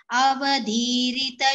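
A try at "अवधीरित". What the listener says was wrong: Only one small observation is avadhirita. Dha is mahaprana there, which was missed. Avadhirita.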